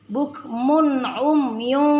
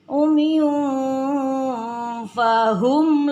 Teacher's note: tanwin bertemu dengan fa, hukumnya ikhfa. Ikhfa, jadi bacaan harus dibaca samar-samar dan dengung.